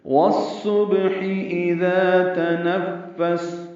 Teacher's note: ادغام شمسی الف لام نہیں پڑھیں گے، صاد پر پڑھیں گے، با ساکن پہ قلقلہ ہے ، ہا وسط حلق سے جلدی اور معروف پڑھیں گے، اذا